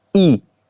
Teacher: अग्र स्वर में जीभ के अगले हिस्से का जोर दिया जाता है